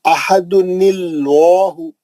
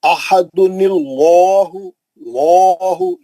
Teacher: अब कैसा पढ़ेंगे, मिला के पढ़े तो अहदुनिल्लाहु, ये लाम पे खड़ा जबर है ना, निल्लाहु, समझ में आ गया। ये लाम जलाला का लाम है जो हमेशा मोटा और बुलंद पड़ेगा।